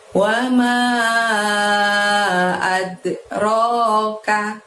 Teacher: Ad, ada dal sukun, maka kita mantulkan pengucapannya ad gitu ya. Ad, ro-nya panjangnya 2, lalu ka-nya pendek.